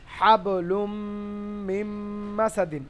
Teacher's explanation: হাবলুম, হা বাজে আবার হাব, লাম মিম দু পেশ লুম, মিম মিম জের মিম, নুন বাদ গিয়ে মিম চলে যাচ্ছে, মানে নুনটা ওখানে সাইলেন্ট হয়ে যাচ্ছে, মিলে যাচ্ছে। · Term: ঈদগাম